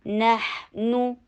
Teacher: हा के ऊपर थोड़ा सा टाइम लगाएंगे, नहनु शॉर्ट रखेंगे और दम्मा के लिए होंठों को गोल करना है